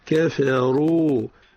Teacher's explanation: كفروا الراء هنا مفخمة. كفروا.